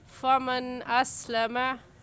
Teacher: इस नून साकिन पर हम गुन्ना नहीं करेंगे और ऐसे पढ़ेंगे फ़मन अस्लमा।